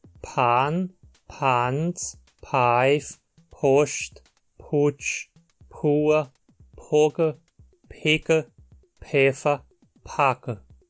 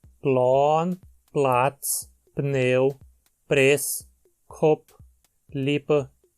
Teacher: P, assim como K, é aspirado no começo das palavras antes de uma vogal.